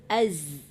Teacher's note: Zai itu jangan dibuat jadi qalqalah ya. Dia sekedar mematikan aja.